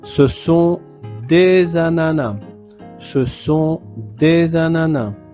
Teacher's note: il y a une liaison entre le S et le A. Donc on crée la voyelle oral za.